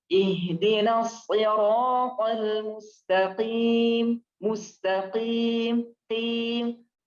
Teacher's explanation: Kan ra-nya tadi ihdinas siratal mustaqim, tim itu tanpa harus kita gerak atau bahasanya apa ya, terlalu nyeklak banget kalau kata orang Jawa tuh, ke dalam banget sehingga dia jatuhnya di tenggorokan, bukan, karena qaf itu di lidah bukan di tenggorokan